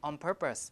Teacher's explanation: the N will change to an m to match the place of articulation of the next sound which is p p is a bilabial so we pronounce it like on purpose